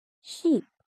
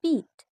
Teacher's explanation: E sound is long and smiling.